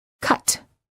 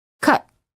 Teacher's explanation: listen to the words pronounced two different ways, with the T released and the T held